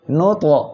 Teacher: ত কলকলার অক্ষর সাকিন অবস্থায় আছে, ধাক্কা দিয়ে পড়তে হবে।